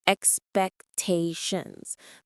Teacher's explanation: The pronunciation is expectations. The stress is on the third syllable.